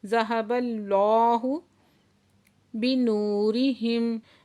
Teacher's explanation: واو ساکن سے پہلے پیش ہے تو واو مدہ ہے، 2 حرکت کھینچ کے پڑھیں گے